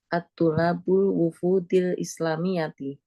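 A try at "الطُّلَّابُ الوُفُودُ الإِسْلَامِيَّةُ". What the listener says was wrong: Nggak pakai alif lam. Tulabul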